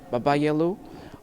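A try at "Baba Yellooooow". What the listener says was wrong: But it's Baba Yellow. Yeah, it's not yellow. You stretch it. Stretched.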